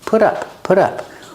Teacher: the T is between vowels, so it's pronounced like a fast D.